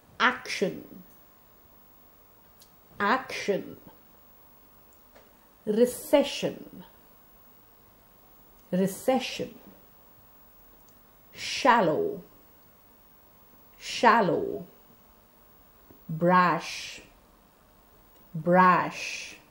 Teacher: It is made when the tip of the tongue comes near the teeth ridge, and it's a fricative or a continuous sound. Sh is a voiceless palatoalveolar fricative. The tongue actually bends in the sh.